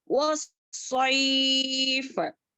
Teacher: सौद भी सीटी वाला लेटर है और मोटा है, मोटा बनाना चाहिए इसको, वस्सैफ, إيلافهم رحلة الشتاء والصيف.